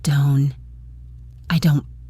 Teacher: It's called a stopped T. You put your tongue in the position to make the T sound, but you don't release the air. · So it's not don't, it's done. You stop the sound in your throat.